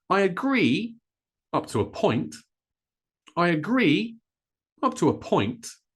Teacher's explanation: So we stress the second syllable of this word, agree, and up to a point. Again, notice how fast I say this, up to a, up to a.